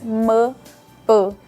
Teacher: são sons que ficam aqui na frente, realmente os bilabiais, m, p. Então eles recebem essa pista visual e de acordo com a frequência que isso é estimulado, eles vão falando.